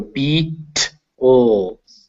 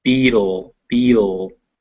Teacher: if you say beetle, it never stops. Your throat will vibrate the whole time.